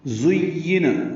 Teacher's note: زا کو تیز صفیر کی آواز سے ادا کرتے ہیں، یہ دال نہیں ہے، زُيِّنَ یا سے ملانا ہے، یا کو اور نون کو جلدی پڑھنا ہے۔